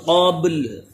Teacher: با میں قلقلہ بھی ہو اور لام بھی ساکن